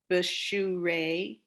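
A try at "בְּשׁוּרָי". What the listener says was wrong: Bishu. Bishu Ra with a little Y after it, a Yud. Bishu Rai.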